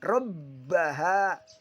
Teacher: huruf ro dibaca tafhim atau tebal karena dia berharokat fathah dan di atas huruf ba ada tanda tasjid. Cara membacanya adalah double ditekan.